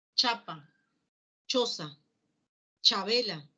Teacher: El otro modo de articulación corresponde a la combinación de oclusión seguido de una fricción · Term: africado